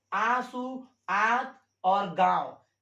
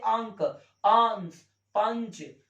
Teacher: अनुनासिक का जो उच्चारण होता है नाक से बहुत कम होता है और अनुस्वार का उच्चारण नाक से बहुत अधिक होता है यानी अनुस्वार का उच्चारण दोस्तों होता है नाक से